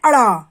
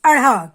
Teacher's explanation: उत्क्षिप्त का अर्थ होता है हमारी जीभ इनको बोलते समय मूर्धा को छूती तो जरूर है, लेकिन जल्दी से वापस आ जाती है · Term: उत्क्षिप्त व्यंजन